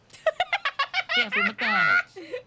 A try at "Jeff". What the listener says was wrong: There's no S. There's no R-E-Y.